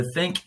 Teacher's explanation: le th de think, il y en a bien la langue qui vient au milieu des dents